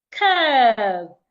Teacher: can also have the word curve it's not cev it's curve the U and R there should be articulated as a long sound